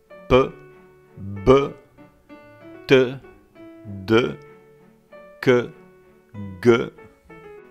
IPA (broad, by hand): p, b, t, d, k, g